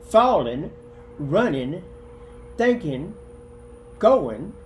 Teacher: then we substitute in for the ing